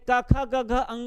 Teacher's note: क वर्ग माने क ख ग घ अंगा का उच्चारण स्थान कंठ होगा